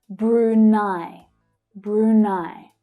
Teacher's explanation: So the first syllable has a longer sound but it's the second syllable that's stressed.